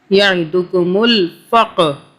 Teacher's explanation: قاف پہ قلقلہ کریں گے، یعنی کہ طاقت سے پڑھیں گے۔